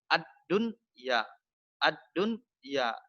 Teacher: Nun mati bertemu dengan ya, tapi tidak ditasdidkan, tidak didengungkan. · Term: izhar wajib